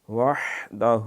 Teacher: الا اللہ، لفظ اللہ کا نام موٹا ہوگا، پور ہوگا۔ وحدہ، ہا کو اچھی طرح گلے سے رگڑا کے نکالیں، اور ہو جو ہے یہ اس کو لمبا کرنا ہے۔